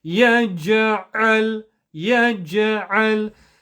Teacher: Do not do a qalqala rule on a lam sukoon. Do not bounce the lam, do not echo the lam, do not rebound the lam.